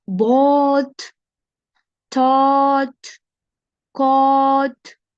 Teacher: Ал эми OU, AU тамгалары плюс GHT тамгасы менен чогуу келсе, биз O деп созуп туруп, анан аягына Т менен бүтүрөбүз